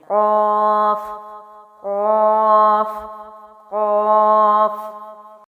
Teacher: اگر آپ اس کی ادائیگی کرتے ہوئے اپنے اندر کا جو ایریا ہے اس کو فیل کریں تو واقعی میں آپ کی زبان پیچھے حلق پر لگتی ہے اوپر کی جانب